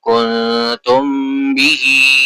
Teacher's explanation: میم ساکن کے بعد لیٹر با ہے تو اخفاء شفوی ہوگا اور غنہ کریں گے